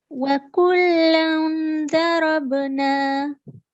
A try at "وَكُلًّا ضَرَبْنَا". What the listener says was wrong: Well done, mashallah. You pronounce it correctly